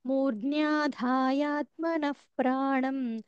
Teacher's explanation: నః తర్వాత ప్రాణం ప వస్తే ఫ సౌండ్ వస్తుంది